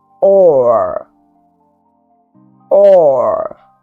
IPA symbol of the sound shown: ɔː